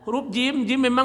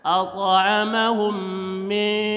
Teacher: Huruf jim memang hurufnya di tengah, jadi dengungnya di tengah.